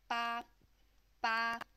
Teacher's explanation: it flicks out at the bottom and to pronounce this one it's with the first flat tone